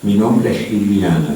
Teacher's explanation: En este caso especial se refiere al hecho de que el S se realiza como una fricción, que comparte el mismo lugar, el mismo punto de articulación que la consonante que sigue